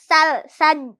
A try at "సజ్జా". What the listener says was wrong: సర్ర లేదు నానాడ. సజ్జా అంతే. సర్ర అంటే నీకు ఇంకా సర్ర అనిపిస్తారు.